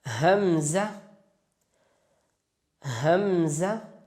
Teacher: اقصی حلق سے جو سینے کی طرف والا حصہ ہے اس سے حمزہ ادا ہوتا ہے